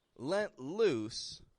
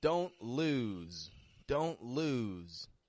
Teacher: voiceless ending only an s on the ending whereas the other you would give a longer vowel to and you'd make that s more like a z you would voice it you would stretch it out let loose versus don't lose don't · to get clear differences between the two you've just got to pronounce one of them with a vowel a little bit shorter and a voiceless ending only an s on the ending whereas the other you would give a longer vowel to and